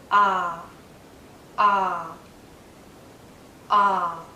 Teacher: relaxed but but my mouth is in a very open position my tongue is low inside my mouth low and a bit forward so that the tip does touch the back of my bottom front teeth